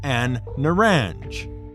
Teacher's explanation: it it can be pronounced as a n an nange because in Arabic some words assimilate the L Sound and double the sound of the first letter of the word